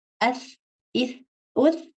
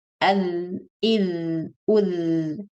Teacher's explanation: tha and dhal are pronounced using the same point of articulation, but tha has air in it, ath, ith, uth, and dhal has voice in it, adh, idh, udh. So you kind of hear the vibrating sound, the way your phone makes sound when you get a message when it's on vibrating mode.